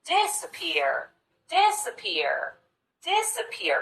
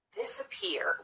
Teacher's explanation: if we categorize that as secondary stress and if you notice this middle syllable we just rush through as quickly as we can disappear we get right to that third syllable that receives the